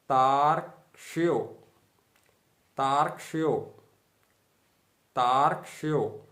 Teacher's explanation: यो में जो रेफ लगा हुआ है उसका उच्चारण अर्थात आधे रा का उच्चारण ता के बाद ही कर दिया जाएगा।